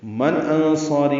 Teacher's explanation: من انصاری میں نون ساکن کے بعد حمزہ آنے کی وجہ سے اظہار ہے، اظہار حلقی